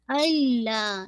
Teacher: ला को आपने 2 काउंट पढ़ना है